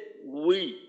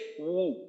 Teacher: ঠোঁটের থেকে আওয়াজটার শুরু, ঠোঁটের থেকেই শেষ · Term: ওয়াওয়ের উচ্চারণটা